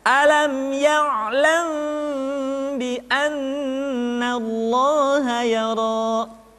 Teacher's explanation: Maka pada tahapan ini, mim mati bertemu dengan ba bukan saja mesti ditahan dan dimasukkan ke rongga hidung, akan tetapi mim mati bertemu dengan ba mesti dibaca dengan sempurna. Caranya, kita baca mim dengan suara yang samar. Caranya, kedua bibir kita direnggangkan, tidak sampai rapat secara sempurna. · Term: ikhfa syafawi